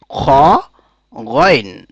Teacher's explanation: বলিষ্ঠ আওয়াজে খ গইন কণ্ঠনালীর একেবারে উপরের ভাগ থেকে এই দুইটি হরফ উচ্চারিত হয় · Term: খা এবং গইন, খা এবং গয়েন